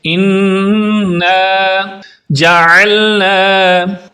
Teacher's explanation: عام حالات میں لوگ انا پڑھ دیتے ہیں، اس نون پر شد ہے، جس نون پر شد ہو اس پر غنہ کرتے ہیں، یعنی آواز کو ناک میں لے جا کر پڑھتے ہیں